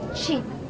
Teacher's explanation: this High front relaxed vowel is produced with little tense in the vocal organ the lips are in relaxed smile as in chin here are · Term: short if